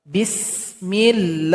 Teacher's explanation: La atau lafaz Allah ini dipanjangkan dua harakat saja, tidak boleh lebih.